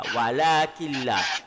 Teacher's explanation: Nun mati bertemu dengan lam, masuk ke la. Walakilla. Itu idgham bila hunnah.